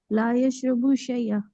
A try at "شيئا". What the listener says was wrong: शई, फिर आपने कल भी कहा था शई और आज भी शई। शाय,